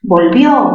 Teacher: Tildación disolvente, disolvente. Volvió, mayor fuerza en qué sílaba? En la sílaba vio. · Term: aguda